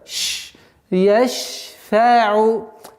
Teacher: Шин – свойство тафаши, и поэтому нужно немножко удержать.